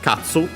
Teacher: Accent on the first mora.